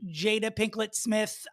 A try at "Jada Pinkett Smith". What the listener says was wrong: uh you're saying pinklet